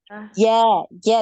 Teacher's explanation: Jadi huruf Jim ini tidak ada aliran nafas baik aliran nafas ataupun aliran suara dia tertahan ya